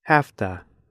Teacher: in slow speech Americans say have to but in fast speech Americans say hafta it looks like this have to it sounds like this afta